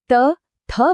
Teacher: ત થ વખતે જીભ સીધી દાંતને અડે છે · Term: દંત્ય